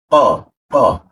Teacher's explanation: Jadi tidak ada ee hembusan udara